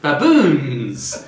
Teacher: we're looking at the lowering of the intonation